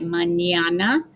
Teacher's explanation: a squiggly line on top and the letter is pronounced it's pronounced like if you put in english n and y together